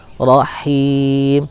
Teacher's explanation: Kemudian setelah ro maka bertemu dengan huruf ha berharokat kasroh. Ha berharokat kasroh punya sifat rokhwah, hams, dan dia istifal ya, mengalir. Kemudian dia ada hamsnya, desis, tapi lewat bunyi yang bukan melalui dari pita suara.